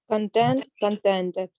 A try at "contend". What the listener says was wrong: Make the second word with a d. Even we put the tongue touches the top of the mouth behind the front teeth.